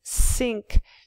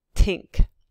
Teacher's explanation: it's changing from a fricative sink to the stop tink